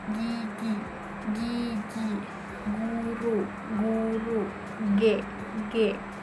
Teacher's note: bentuk bibirnya sama seperti K, bagian belakang lidah menempel pada velum